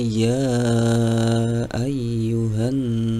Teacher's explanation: ya ayyuhan itu dibaca mad atau panjang selanjutnya di lafaz annasu annasu itu dibaca ghunah alias harus ditahan dengan berdengung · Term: gunnah